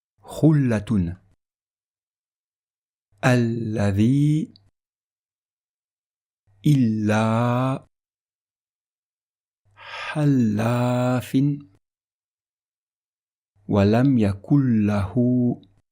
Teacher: le Lam sera prononcé avec légèreté, sans mettre d'emphase, sans faire d'effort particulier de prononciation